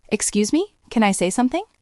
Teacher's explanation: That high rising terminal sounds like a question. It signals submission.